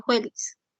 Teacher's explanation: alternancia consonántica entre la labiodental sorda, fricativa labiodental sorda y la fricativa velar sorda.